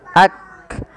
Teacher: ini maka Kaf memiliki Salah satu sifat yaitu sifat Hamas dan Kaf juga memiliki sifat namanya syiddah syidah itu tertahannya suara dan Hamas itu mengalirnya nafas